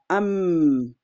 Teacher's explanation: misalkan nih mim itu kan dia mahrajnya bertemu dua bibir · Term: mim sukun